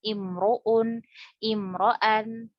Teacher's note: misalnya hamzahnya ini dhammatain atau fathatain, maka ro-nya tafkhim.